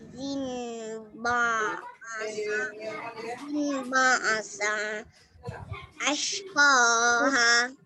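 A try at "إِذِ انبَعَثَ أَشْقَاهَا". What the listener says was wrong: Izin ba'atha. Bukan sa, okey? Izin ba'atha ashqaha.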